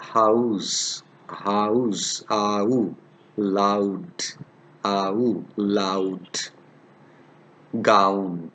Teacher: The starting sound is like ah, and glides from close to mid-open. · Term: Diphthong au